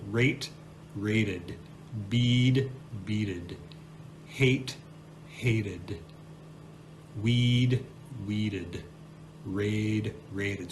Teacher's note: schwa plus the D sound and that will give your verb an extra syllable